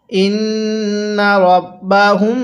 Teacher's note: দেখুন মিম সাকিনের পরে বা আছে এজন্য মিমটা গুন্নাহ করে পড়তে হবে